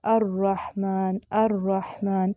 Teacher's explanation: جس حروف میں یہ صفت پائی جاتی ہے اس کو مقررہ کہتے ہیں، مقررہ، اور وہ ہے را، جن کو ادا کرتے وقت زبان میں کپ کپی پائی جاتی ہے جسے تکرار سا محسوس ہوتا ہے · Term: مشابہ تکرار